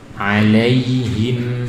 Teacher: Lembut, lentur, lunak, mudah mengalir dan panjangnya lebih dari satu harokat ya, kurang dari dua tapi lebih dari satu. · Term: lin